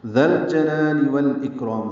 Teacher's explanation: ذال کو نرمی سے پڑھیں گے، لام سے ملا دیں گے. لام ساکن پہ اظہار، جیم کو جلدی پڑھنا ہے.